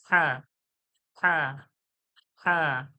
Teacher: হালকা হাওয়ার মতো একটু যেন হাওয়া মনে হবে, যেন গলা থেকে হাওয়া বার হয়ে, গলা থেকে হাওয়া বার হয়ে হা বলা হচ্ছে।